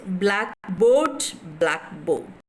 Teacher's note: this is a compound noun where the stress occurs on the first syllable